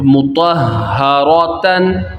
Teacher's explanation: طا کو موٹا کرنا ہے، وہ طا کو ہا کے ساتھ ملانا ہے، تشدید والا ورڈ ہے۔